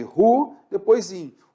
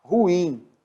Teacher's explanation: esse i, que é a vogal, é a segunda vogal do hiato, ele é seguido do m e é nasalizado, então não pode ter acento, tá?